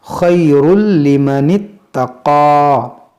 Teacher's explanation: تنوین کے بعد لام ہے، یہاں پر ہوگا ادغام